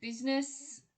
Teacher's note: business, we don't pronounce that middle I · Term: drop syllables